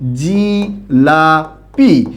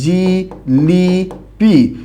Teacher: অর্থাৎ এখানে প্রথমটা এবং শেষটার প্রভাবে মাঝের আ পরিবর্তন হয়ে ই হয়ে গেছে। এইরকম পরিবর্তনকেই আমরা বলি মধ্যগত স্বরসঙ্গতি।